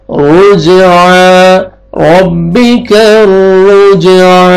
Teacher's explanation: रा को मोटा करके आगे जीम क़लक़ला डबल साउंड आएगा।